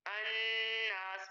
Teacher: پڑھتے ہوئے لام جو ہے وہ ادائیگی میں حروف شمسیہ جس کے آگے آ جائے، حروف شمسیہ اس کے ساتھ ال لگے تو اس ال کا حمزہ پڑھا جائے گا لیکن لام نہیں پڑھا جائے گا